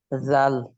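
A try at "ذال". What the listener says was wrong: জাল। আপনি জিভের ভিতরে রাখেন, জিব্বার আগে দাঁতের আগে লাগান। জাল। আরো জিভে বের করেন। জিভে বের হয়নি। হিন্দুদের দেবী দেখছেন? দেবী দেবী হিন্দুদের হ্যাঁ জিভে বের করে থাকে। জিভে বের করেন তো দেখি। দুপুর দাঁতে দিয়ে উচ্চারণ করেন তো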